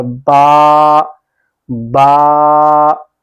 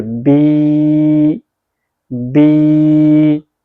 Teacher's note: کھڑی حرکات کو بھی حروف مدہ کی طرح 2 حرکات تک کھینچ کر پڑھیں گے۔ اس سے زیادہ نہ کھینچیں، کیونکہ پھر اس سے زیادہ آگے یعنی آپ کھینچیں گے تو پھر کھڑی حرکات نہیں ہوگی، پھر مدہ میں حرف جو ہے، حرف مدہ پھر لگا کے پڑھیں گے تو پھر وہ مد کی شکل میں پڑھا جائے گا، ٹھیک ہے؟